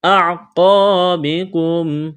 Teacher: قاف کو موٹا کرنا ہے، الف مدہ ہے